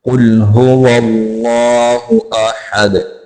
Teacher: काफ को मोटा करके पढ़ेंगे, कौफ को काफ नहीं पढ़ना। कुल पढ़ेंगे तो दुरुस्त नहीं है क्योंकि कुल का माना होता है खाना, और कौफ मोटा करके जब पढ़ेंगे इसका माना होता है कहना।